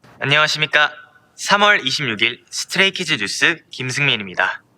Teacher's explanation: standard intonation that goes up at the start of a sentence and then slowly down at the end will sound more calm and respectful